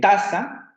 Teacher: ustedes saben que tiene el acento en la primera sílaba